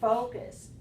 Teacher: Focus stressed on the first syllable